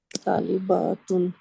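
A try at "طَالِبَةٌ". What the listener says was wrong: बातुन नहीं कहें, ठीक है, बातुन जब कहेंगे ना तो वो जमा बन जाएगी। बतुन, तालिबतुन, सही है।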